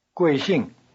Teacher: Both syllables of 贵姓 have the falling tone.